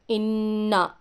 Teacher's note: नून मुशद्दद है, यहाँ पर थोड़ी देर नाक में गुन्ना करना है इसको।